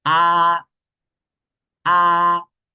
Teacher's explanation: el primer tono va a ser muy sencillo porque es lo más fuerte que puedas y esto mantener